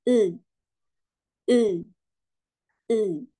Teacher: maka huruf i bukan bunyi I lagi melainkan e e e